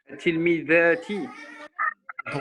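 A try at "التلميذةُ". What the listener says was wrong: Pourquoi tu me mets un i comme ça, bizarrement? Et donc, ouais, mais féminin, ok, mais ça rend pas en i. Pourquoi ça devrait le rendre en i?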